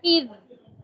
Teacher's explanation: آواز چل رہی ہے نا، اذ ذال کی آواز چل رہی ہے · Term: نرمی